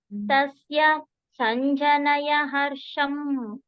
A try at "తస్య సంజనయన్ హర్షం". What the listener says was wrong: మళ్ళీ ఎన్ కట్ అయింది మధ్యలో. ఆ రెండిటికి గ్యాప్ తీసుకురావకండి. తస్య సంజనయన్ హర్షం కలిపి చెప్పాలి.